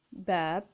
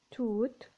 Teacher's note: we stretch our voice when we pronounce the second long vowel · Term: long vowels